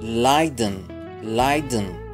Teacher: نخفف المسافة جدا جدا بين الدي والإن، لا نقول لايدن لايدن لايدن لايدن.